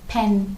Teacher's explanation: when you say pen your lips are pressing together totally closing on to each other